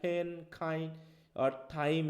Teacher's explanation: when you produce the sounds like pain kind time certain amount of air comes out of the mouth the comes air air comes out of the mouth however when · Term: aspiration